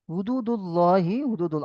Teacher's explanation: আল্লাহ লাম মুশাদ্দাদের পূর্বে পেশ এসেছে, তাই আল্লাহ লামকে ল, আল্লাহ লামকে পুর অর্থাৎ ল করে পড়তে হবে।